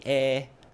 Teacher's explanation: the word for one, which is usually a nasal, is actually an elongated E sound